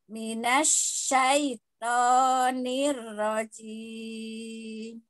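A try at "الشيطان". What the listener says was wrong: Uti balik lagi ke sa, bukan sya.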